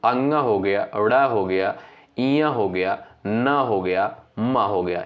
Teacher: इनका उच्चारण करते समय जो है नाक और मुख से जो है वायु निकलती है। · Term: अनुनासिक